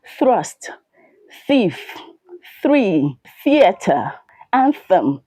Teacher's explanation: They are known with a voiceless th sound.